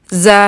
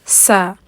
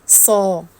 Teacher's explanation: ان تینوں حروف کا ایک ہی مخرج ہے اور اس میں زبان کی ٹپ جو ہوتی ہے وہ سامنے والے نیچے کے جو ہمارے دو دانت ہیں ان کے پیچھے جا کے لگتی ہے اور اس طرح سے یہ ادا ہوتی ہے۔